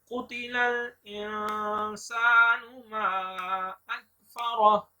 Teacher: کاف کو موٹا پڑھیں گے.